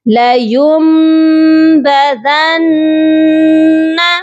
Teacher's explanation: اگر نون ساکن اور تنوین کے بعد جب بھی حروف با آتا ہے تو ہم نون ساکن اور تنوین کی آواز کو میم میں بدل دیتے ہیں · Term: اقلاب